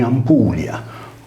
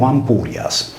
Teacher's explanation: Con la rotacizzazione della consonante /l/ in /r/, poiché tali fonemi erano intercambiabili in nesso consonantico, il toponimo è divenuto Ampurias.